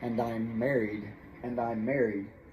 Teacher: since one ends with an m and the next one begins with it now it's like there's only one m there